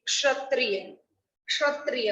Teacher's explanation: क और श दोनों की आवाज आपको इसमें आएगी